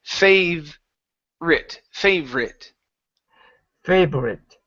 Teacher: in the word favorite, that O is not pronounced.